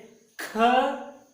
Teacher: उच्चारण के समय श्वास वायु ज्यादा लेना पड़ता है। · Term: दीर्घ